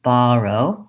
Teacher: we have first syllable stress which means that the ba syllable or Bo or ba depending on which pronunciation you use is long and the RO syllable is short and reduced so we're gonna be having a long short Baro pattern then